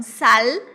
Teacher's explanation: o L do espanhol a gente pronuncia lá no céu da boca, então sal.